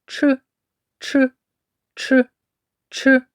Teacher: звук ч Ми не можемо довго протягнути вимовляється він твердо Отже це твердий приголосний